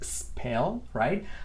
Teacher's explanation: Acuérdate spell con una S bien clarita sin vocal anterior.